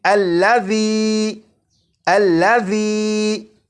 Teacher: ذال کو C T کی آواز کے بغیر پڑھنا ہے